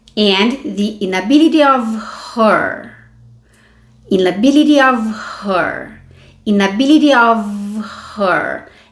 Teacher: ela estressou marcou bem esse her · ela ligou e deu uma reduzida nesse of com som de v